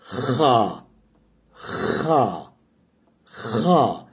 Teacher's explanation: Biraz bu hı harfi boğazdan gelen bir ses. Ve boğazı biraz hırıltılı bir şekilde zorlamanız gerekiyor.